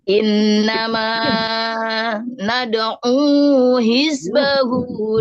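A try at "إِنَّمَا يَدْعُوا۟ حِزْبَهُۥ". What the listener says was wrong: Tadi innama nad'u yad'u kok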